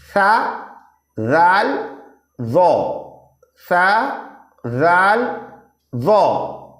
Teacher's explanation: ज़बान की नोक और ऊपर के दांतों के अंदरूनी किनारे